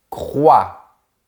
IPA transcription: kʁwa